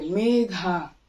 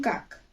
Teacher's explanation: কিন্তু আমরা যদি উচ্চারণ করি যে মেঘা, তাহলে দেখা যাচ্ছে মেঘা স্বরে উচ্চারিত হচ্ছে এবং কাক শেষে বন্ধ হয়ে যাচ্ছে, কাক আগে টানা যাচ্ছে না।